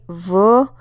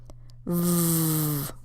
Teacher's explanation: if you say the letter V then you can feel your throat vibrating when you say it try it say V and then put your hand on your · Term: voiced consonants